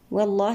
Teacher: والله لام لفظ الجلالة مفخم